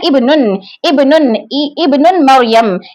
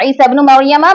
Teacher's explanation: मिलाकर पढ़ने की सूरत में हमजातुल वस्ल की हमजा की आवाज प्रोनाउंस नहीं होती, बल्कि वो आवाज उसकी हट जाती, गिर जाता है हमजा वहां से।